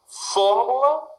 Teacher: sílaba tônica é a antepenúltima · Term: proparoxítonas